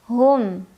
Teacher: Ada idhar syafawi karena ada mim sukun bertemu dengan huruf ya. Cara membaca mim sukunnya jelas.